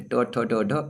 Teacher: मूर्धन्य व्यंजन यानी मूर्धा से